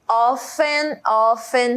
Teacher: Esse often a gente não fala a letra T.